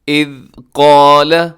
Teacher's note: ذال کو قلقلہ ہونے سے بچائیے گا۔ اذ قال، اور قاف موٹا ہے، اس کے ساتھ الف بھی موٹا پڑا جائے گا۔